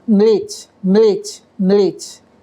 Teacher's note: English and Hindi are different in that Hindi allows a word to begin with the sounds ma, la, one after the other.